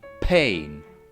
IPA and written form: pheɪ̆n (pain)